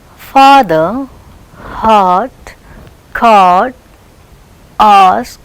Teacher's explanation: Open, it is completely open and lips are unrounded. Back open unrounded vowel.